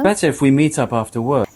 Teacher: the t sound at the end of meet changes into a glottal stop before the vowel sound in up